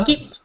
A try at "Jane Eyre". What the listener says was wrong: You don't skip at all. You pass the N to... You pass the letter N to the next word. So it becomes Nair. So the link is Nair. We pass the N. Remember, when a word begins with a vowel, it takes the consonant from the word before. The last consonant is N, so Eyre takes the N.